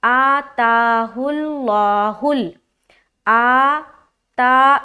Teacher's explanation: آ تا دونوں کو برابر لمبا کرنا ہے